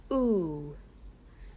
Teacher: The back vowels are ooh, ooh. Notice here your lips are rounded.